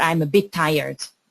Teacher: We don't pronounce both of the T's, we just say bit tired as if it was one word.